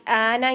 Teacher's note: تو ہم اس کو 6 کاؤنٹ مد لازم کی شکل میں پڑھیں گے جب ہم ابدال کریں گے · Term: مد لازم کلمی مخفف